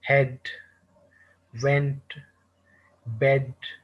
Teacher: these words have short vowel e sound